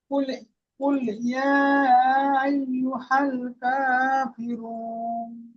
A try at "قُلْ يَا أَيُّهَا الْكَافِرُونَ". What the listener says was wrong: তো এখানে কুল ইয়া, ইয়াটির মধ্যে মুনফাসিল, তিন আলিফ টান দিয়ে পড়তে হবে, আরো বেশি করে টান দিয়ে পড়বেন। কুল ইয়া আইয়ুহাল কাফিরুন।